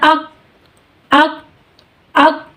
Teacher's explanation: تو اب کیا ہے، اگر میں اس کو صفت حمز کے بغیر پڑھوں گی تو یہ لفظ ہوگا حمزہ کاف زبر اک، اک، اک، یعنی آواز میں شدت پیدا ہوئی اور آواز بند ہو گئی